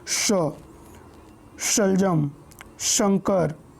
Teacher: जब जीवा हमारे तालु से टकराती है तो उसे हम तालव्य श बोलते हैं